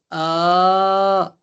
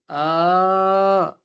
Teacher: खड़ा ज़बर अलिफ मद्दा के बराबर है 2 चीज़ों में, आवाज़ में और कशिश में